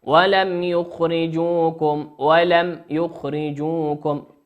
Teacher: ميم ساكنة أتى بعدها حرف الياء، والياء من حروف الإظهار